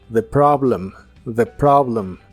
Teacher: la o de Problem se pronuncia como una a profunda